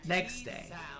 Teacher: clearly the T sound in next is often dropped. So it sounds more like next day. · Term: Dropping sounds